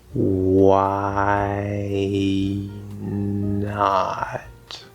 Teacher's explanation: we hear the voice the whole time but we're going from the vowel i spelled with a y